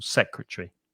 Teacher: so three syllables and stress the first syllable · we swallow a syllable, just like in comfortable, vegetable, secretary.